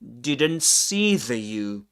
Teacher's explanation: Okay. So, three consonants together or the the N, the T, and the S. We drop the one in the middle.